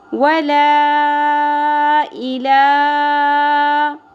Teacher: یہاں پر مد منفصل آ گئی جس کو ہم 3 الف کے برابر کھینچیں گے